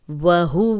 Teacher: واو پہ ہونٹ گول کریں گے